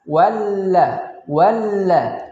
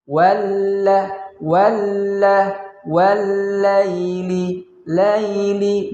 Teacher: Huruf lam yang pertama dia sukun, kemudian ada huruf lam yang kedua. Nah, cara membacanya, lam yang pertama tidak kita baca, langsung masuk kepada huruf lam yang kedua. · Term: alif lam asy-syamsiyah